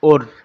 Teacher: اس را کو باریک پڑھیں گے کیونکہ اس کے پیچھے زیر آ گیا ہے